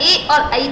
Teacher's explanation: ए और ऐ का उच्चारण स्थान कंठ ताल